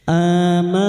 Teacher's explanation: Samarkan bunyi nun sukun dan mendengung selama tiga harakat · nun bertasdid gunah musyadadah kita dengungkan selama tiga harakat. Annahuamir yang berharakat panjang dan tidak bertemu hamzah macilah khasirat dua harakat kita panjangkan. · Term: ikfa hakiki